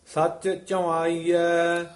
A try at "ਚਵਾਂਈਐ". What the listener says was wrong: ਵਾਵੇ ਦੇ ਕੰਨੇ ਉੱਤੇ ਬਿੰਦੀ ਲਾਉਣੀ ਹੈ। ਚਵਾਈਐ।